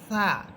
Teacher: জিহ্বার আগা সামনের উপরের ২ দাঁতের আগার সাথে লাগবে, সা। এবং সা এটা নরম করে বলবেন, বাতাস বের করে বলবেন, সা।